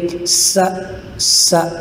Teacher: سین یہ سیٹی حروف، سیٹی کی آواز نکال کر اس کو ادا کریں گے، سا سا، اور سا کے اندر زبان کو اوپر کے سامنے والے دانتوں کے ساتھ ٹچ کر کے ادا کریں گے، سا سا۔